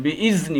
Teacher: ہم نے ذال کو ادا کرنا ہے، زا نہیں ادا کرنا ہے، بِإِذْنِ، زا نہ ہو جائے، ٹھیک ہے۔